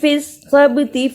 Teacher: سین کی آواز نکالی اور با پہ قلقلہ بھی کیا